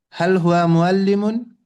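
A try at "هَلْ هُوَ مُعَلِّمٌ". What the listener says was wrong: এই যে প্রশ্ন আওয়াজটা ঠিক হচ্ছে না। হাল হুয়া মুআল্লিমুন, হাল হুয়া মুআল্লিমুন, আপনি যে আওয়াজটা দিচ্ছেন এরকম, কিন্তু সঠিক আওয়াজটা কি?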